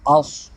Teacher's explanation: صاد حرف مثالیہ میں سے ہے، اس کو ہر حالت میں پوری یعنی موٹا ادا کریں گے